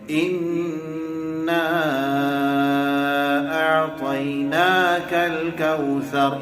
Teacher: اِنَّا کے اوپر 2 حرکت کے برابر غنہ کیا جائے گا، نا کو کھینچیں گے 4 حرکت کے برابر